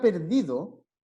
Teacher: cargamos la voz en la segunda sílaba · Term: sílaba tónica